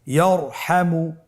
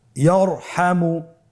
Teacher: তাহলে ইয়ারহামু, র সাকিন তার পূর্বে জবর আছে, র সাকিন তার পূর্বে যদি জবর থাকে অবশ্যই রকে পোর করে মোটা করে পড়তে হবে।